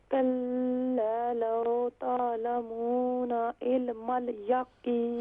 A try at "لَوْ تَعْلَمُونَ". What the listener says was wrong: ہاں لاو نہیں ہوگا، یہ حروف اللین میں سے ہے. لام واو زبر لو، تو یہاں ہم اسے نرمی سے ادا کریں گے.